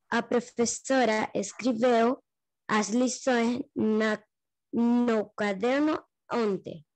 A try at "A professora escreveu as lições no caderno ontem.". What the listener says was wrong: Perfeito.